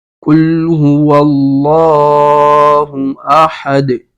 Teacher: قاف جو ہے حروف مستعلیہ سے ہے تو پر پڑا جائے گا